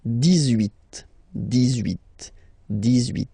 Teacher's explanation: So you will make this little link between the two, the liaison.